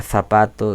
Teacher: Lengua entre los dientes y el sonido es fricativo, no silbante, el aire fluye sin silbar.